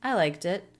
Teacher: So light true T linking into the vowel I, liked it, and then a stop T because it's the end of the thought.